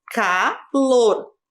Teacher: A sílaba mais forte é o lor. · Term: sílaba tônica